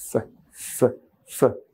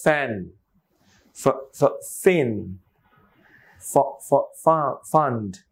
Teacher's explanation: বাংলার ফতে ঠোঁট মিশে যায় ফ, ইংরেজির ফতে মিশে না। উপরের দাঁত নিচের ঠোঁটের সাথে লাগবে। সো ফ, উপরের দাঁতটা, উপরের যে দাঁত এর নিচের অংশ নিচের ঠোঁটের উপরের অংশের সাথে এরকম কামড়ে ধরেন।